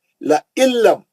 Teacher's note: نون ساکن کا ادغام بلا غنہ، نون غائب ہو گیا